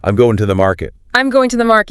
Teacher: I hear going and market loud and clear.